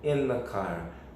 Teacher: Lembrando que o the aqui, o próprio som the é um schwa.